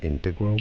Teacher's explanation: it is also correct to say it as integral, with a stress on the second syllable